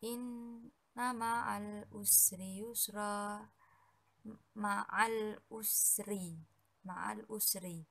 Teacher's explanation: huruf alif lam bertemu dengan huruf Ain dan dibaca secara jelas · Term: Alif Lam Qomariah